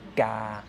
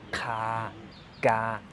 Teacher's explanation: langen ah dann kriegen wir die zwei Silben gar und Kaga einmal unbehaucht einmal behaucht